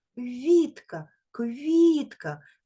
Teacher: М'який приголосний тому що стоїть голосний і пом'якшує його